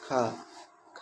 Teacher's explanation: स्पर्श व्यंजन कंठ है, अघोष है और महाप्राण है।